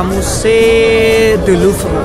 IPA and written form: myze dy luvʁ (Musée du Louvre)